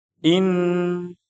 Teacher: nun masuk ke nun. Nunnya jadinya apa, ditahan dan dibaca dengan gunnah. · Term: idgham bi gunnah